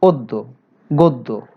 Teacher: 2, শব্দের পরে, শব্দের আদ্য অ এর পরে যদি জফলা থাকে, জফলা যুক্ত ব্যঞ্জন বর্ণ থাকে, যেমন দেখো অদ্য, গদ্য, এ জাতীয় শব্দে আমরা দেখব যে অ এর পরে যে বর্ণটি আছে তার সাথে জফলা রয়েছে, এই জফলা থাকার কারণে অ এর উচ্চারণ ও হয়ে গেছে